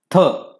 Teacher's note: महाप्राण वर्णाचा उच्चार करताना तोंडातून अधिक प्रमाणात काय येत हवा बाहेर पडते